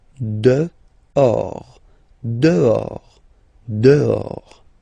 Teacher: this H in French doesn't exist phonetically, so you don't pronounce it. Dehors.